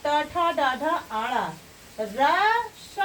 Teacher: इन वर्णों का उच्चारण स्थान क्या होगा? मूर्धा होगा।